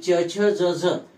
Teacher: ज झ याच वर्णांचा याच व्यंजनांचा उच्चार दंत तालव्य सुद्धा होतो दुसऱ्या वर्गातील ही जी चार व्यंजन आहेत यांचा उच्चार दोन प्रकारे होतो तालव्य आणि दंत तालव्य